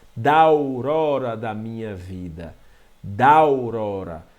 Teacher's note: do ponto de vista da sonorização, da aurora, o som vocálico ele sofre uma elisão